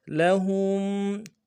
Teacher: ہاں کو میم ساکن کے ساتھ ملانا ہے، میم ساکن میں غنہ کریں گے